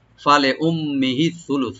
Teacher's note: উম্মিহি এর মিম মুসাদ্দাদ এখানে একটু গুণা করে তার সাথে মিলাবো।